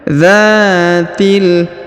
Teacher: Huruf dza dipanjangkan 2 harokat karena di depannya terdapat alif